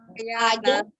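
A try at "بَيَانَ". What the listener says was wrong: A-nya kurang jelas Mi. A-nya harus sempurna A begitu ya, bukan A atau A gitu. A.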